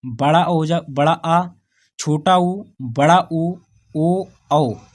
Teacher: जीभ के पिछले भाग से 5 स्वर बोले जाते हैं